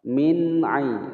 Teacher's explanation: nun sukun bertemu ain dibaca jelas, hukum bacaan idhar